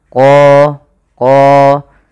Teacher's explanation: huruf qa ini harus kita tebalkan qa, karena dia punya sifat huruf isti'la